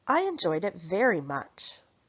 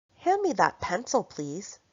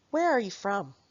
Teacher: the rising falling pattern where the pitch rises and falls on the last word